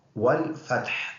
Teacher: فا حروف شفویہ میں سے ہے جو ہونٹوں سے ادا ہوتے ہیں، اور ہا گلے سے ادا ہوگا۔